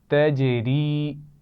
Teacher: جیم پر قلقلہ ہے اور را باریک پڑھی جائے گی